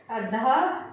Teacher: ध सघोष महाप्राण दंतय है